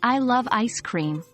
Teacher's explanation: with stress on love, it shows your strong affection for ice cream